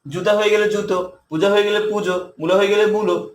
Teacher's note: যে শব্দের এই শব্দগুলোর শেষের দিকে আমরা একটা ও যুক্ত করে দিব